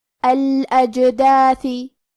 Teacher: جیم حروف القلقلہ میں سے ہے اور قلقلہ کا معنی ہے حرف ساکن کو ہلانا، لہذا ہم جیم کو ہلاتے ہوئے یہ کلمہ کو پڑھیں گے